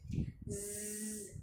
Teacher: Jahar itu adalah tertahan nafas. Nah, ketika kita mengucapkan huruf zai, berarti nafas kita ditahan, jangan dialirkan. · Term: sifat jahar